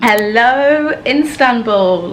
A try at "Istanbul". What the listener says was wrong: By the way, you're saying it wrong. It's Istanbul. It's not Instagram. Istanbul. You're saying it like Insta. It's Istanbul.